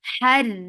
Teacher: Ra will be light because there is kasra on it. Whenever ra is with kasra, it is light.